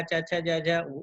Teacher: ठ का भी अभ्यंतर प्रयत्न स्पृष्ट है, लेकिन वह स्थान नहीं मिलेगा क्योंकि ठ का उच्चारण स्थान मूर्धा है और च का उच्चारण स्थान, च वर्ग का उच्चारण स्थान तालु है